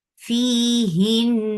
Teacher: So you're keeping the sound in your nose for a longer time because it has a akmal gunna.